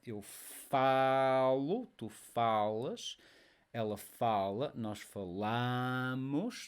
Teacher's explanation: all these verb forms, they are stressed on the next to last syllable. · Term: word stress